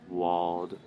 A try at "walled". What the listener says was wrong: But you're saying more of a T sound. Duh. Yeah, so you wouldn't say these cold or wold. Like you were saying this bolt. But it's bald.